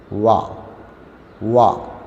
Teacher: രണ്ട് ചുണ്ടുകളും വൃത്താകൃതിയിൽ മുന്നോട്ട് കൂർപ്പിക്കുക. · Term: വാവ്